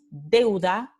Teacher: vocal e más semivocal en segunda posición, u. Entonces es un diptongo decreciente.